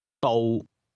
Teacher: Here's the Cantonese word for road, which is pronounced with a low level tone.